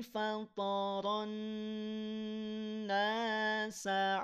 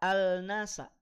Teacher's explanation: Alif lamnya tidak muncul ke permukaan, tidak dibaca, alias dari fatoro langsung ke nun bertasdid. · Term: alif lam syamsiyah